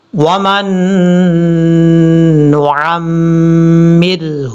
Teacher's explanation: وَمَن نُعَمِّرْهُ را بریک پر آ جائے گا، کیونکہ را ساکن سے پہلے زیر ہے، زیر کی وجہ سے بریک پڑھیں گے · یہاں سے وَمَن نُعَمِّرْهُ میم کو جب نون سے کنیکٹ کریں گے تو بیچ میں نون ساکن ہے، اس نون کو چھوڑ دیں گے اور یہاں پہ غنہ ہوگا. آپ نے ایک الف کی مقدار غنہ کرنا ہے.